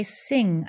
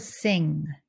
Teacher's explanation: instead of lifting up the front of your tongue to say the n Sound you lift up the back of your tongue to close off your throat